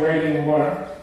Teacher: You've got waiting and water, where an American might say wading in water, with the flipped T in the middle there